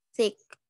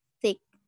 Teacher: Jadi, ujung lidah menyentuh belakang gigi atau ujung lidah menjulur di antara gigi atas dan gigi bawah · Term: dental